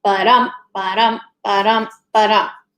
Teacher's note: The first one is iambic meter, and that foot that we're talking about is called an iamb, and that foot in an iambic meter is an unstressed syllable followed by a stressed syllable.